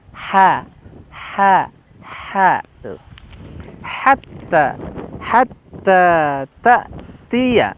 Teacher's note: Munfakkina hatta dengan huruf ha tipis ya. Kalau di makhraj itu tempatnya, lokasinya di tenggorokan paling atas.